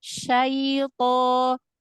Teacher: Lin itu punya tempo. Satu harokat lebih tapi nggak sampai 2 harokat.